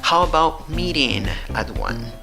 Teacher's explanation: La entonación va hacia abajo. ¿Por qué? Porque son WH questions